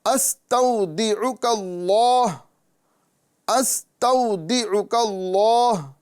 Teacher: اب ہم اس کاف کو لام سے ملائیں گے